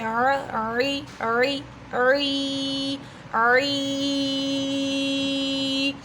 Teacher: عین حلق کے درمیان والے حصے سے ادا ہوتا ہے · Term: وسطی حلق